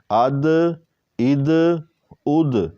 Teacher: دال میں قلقلہ بھی کریں گے جیسے طا میں کیا تھا